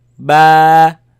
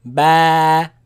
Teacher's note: It is elongated, it is stretched because of the alif following it. So ba. You see the sound is light sound.